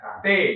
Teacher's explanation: Jadi ujung lidah menyentuh dengan pangkal gigi seri. Pangkal gigi seri itu yang berbatasan dengan gusi, di bawahnya gusi ya. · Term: huruf ta